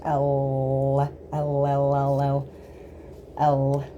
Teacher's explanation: You basically have your whole tongue touching the roof of your mouth very lightly at the front.